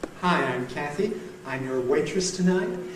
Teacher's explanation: A rise each time, a high rise, as if she's seeking your agreement to this statement.